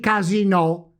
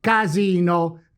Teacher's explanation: We get thus: casinò, which is a TRONCA type of word Step three: let's build the second word, by placing now the tonic accent on the second vowel, the I of Imola. We get thus: CASINO, which is PIANA type of word.